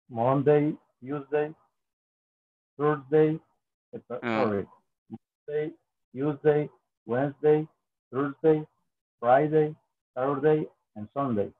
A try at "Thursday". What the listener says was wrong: Thursday, Thursday. Ahí no se pronuncia U. Solo se dice como Thursday, Thursday, Thursday.